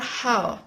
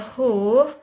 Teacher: H. This consonant sound is produced when the flow of air is stopped by glottis with some contraction of the glottis closing, and then released. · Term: glottal sound